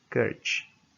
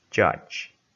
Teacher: The first of these is voiceless, the second voiced. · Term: affricate